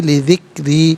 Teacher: لی علیحدہ، ذکری علیحدہ، یا علیحدہ ملا کر پڑھیں گے، لی ذکری، را کے نیچے زیر، را کو باریک کر کے پڑھا جائے گا